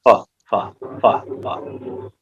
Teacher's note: और जब फा बोलेंगे फा, तो दूसरा होंठ होंठ से नहीं मिलेगा, फा फा फा फा, तो ये नुक्ते वाला है।